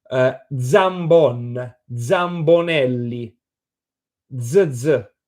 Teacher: In Northern Italian, this J becomes a voiced Z.